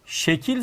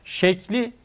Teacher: bir ek getirdiğimizde son hecede bulunan dar ünlünün düştüğünü görmekteyiz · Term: ses düşmeleri